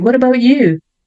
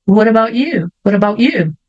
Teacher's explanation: Corta o som do T e já vai pro I.